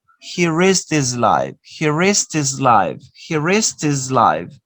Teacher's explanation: you omit the sound ka, and you say he risked his life, risked his, and also you omit the sound ha.